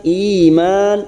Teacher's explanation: i kasar bertemu ya sukun 2 harakat